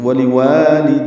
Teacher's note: دال کو یا سے ملانا ہے، یا پر زبر ہے اس کو جلدی پڑھنا ہے